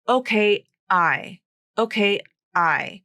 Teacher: She literally stopped the vocal cord vibration and separated those two words. So there's no link there.